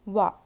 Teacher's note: دونوں ہونٹوں کو گول کرنے اور نہ ملانے سے واو ادا ہوتا ہے. واو کے اوپر زبر ہے، نہیں کھینچیں گے.